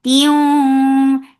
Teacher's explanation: idgham with gunna, so keep the sound in your nose for a longer time